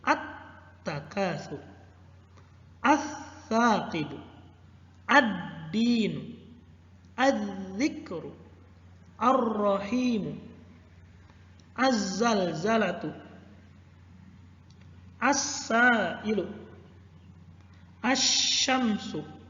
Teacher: Yang pertama, huruf lamnya tidak dibaca. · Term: alif lam syamsiyah